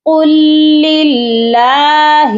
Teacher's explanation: اللہ کا لام ہے لیکن باریک پڑھا جا رہا ہے